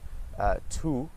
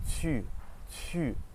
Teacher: It's the same as the English U, but your mouth is much more pursed. So think about if you ate a lemon, your mouth would be like, or if you're trying to whistle, it'd be.